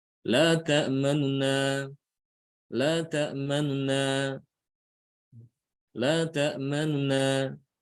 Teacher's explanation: harokat huruf yang dhammah ini dia tidak dibaca sempurna ya, tapi dia dibaca kurang dari satu harokat. Bukan dibaca satu harokat, tapi dia kurang dari satu harokat. · Jadi tidak dibaca la ta'manuna, tidak demikian, tapi la ta'manuna. Nun yang pertama ini yang harokatnya dhammah, dia tidak dibaca satu harokat, tapi dibaca kurang dari satu harokat. Itu yang namanya rom atau ikhtilas.